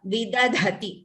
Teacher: The second dha is Mahaprana.